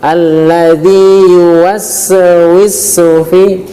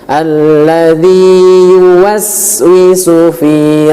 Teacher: hati-hati di huruf sin tanda sukun ataupun sin mati, jangan sampai terpantulkan ataupun bunyi qalqalah. Alladzi yuwaswisu fi, yuwaswi bukan yuwaswi.